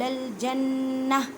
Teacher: وقالوا لن يدخل الجنہ وقت کی صورت میں اسے تا کی آواز کو ہاں میں بدل دیں اور ہاں کو سائلنٹ کر دیں